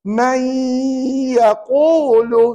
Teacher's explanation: masukkan nun mati ke dalam ya dan dibaca dengung dua harakat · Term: Idgham ma'al ghunnah